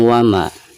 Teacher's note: Wama dipanjangkan 2 harokat karena dihukumi mad tabi'i, karena ada fathah lalu berhadapan dengan alif, jadi dibacanya 2 harokat.